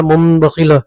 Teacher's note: مثلا مم بخیلہ میں نون کے بعد با ہے نون ساکن کے بعد، تو نون ساکن کو میم سے بدل کر پڑھا · تنوین یا نون ساکن کے بعد با آئے تو نون کو میم سے بدل کر غنہ اور اخفاء کے ساتھ پڑھیں گے، ٹھیک ہے، اسی کو اقلاب کہتے ہیں۔